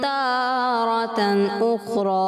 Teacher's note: لفظ تارتن میں مجھے محسوس ہوا کہ رام میں تھوڑا سا آپ رکے ہیں, جس سے تھوڑا تشدید کی طرف محسوس ہوا